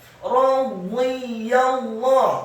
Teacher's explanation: Membaca huruf dha meskipun kasrah wajib untuk ditafkhimkan, dibaca tebal dengan posisi lidah kita di langit-langit atas